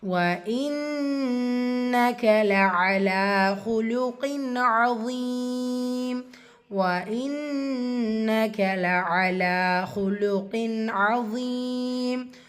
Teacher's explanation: நூன் முஷத்ததா குன்னா செஞ்சு ஓதணும்